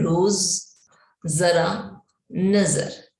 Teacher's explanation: ज इसे बोलते समय जीभ दांतों के थोड़ा ऊपर स्पर्श करती है। जब हम नुक्ता वाले शब्दों को पढ़ते हैं, बिंदी वाले शब्दों को पढ़ते हैं, तो जब हम इनको बोलते हैं तो हमारी जो जीभ है वो दांतों के थोड़ा ऊपर स्पर्श करती है।